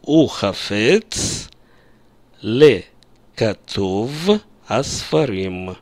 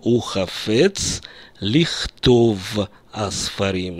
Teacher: Из-за тенденции к сокращению гласных звуков и вообще всех известных тенденций, в том числе в классическом иврите, вместо «ле» произносится «ли» предлог, правда? Я произношу «ухафец лихтов асфарим».